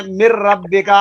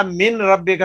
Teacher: جو کوئی را آ رہی ہے تو نون کی آواز ختم ہو جائے گی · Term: ادغام